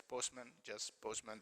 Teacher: You could hear it as postman, just postman. The t is not pronounced. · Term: elision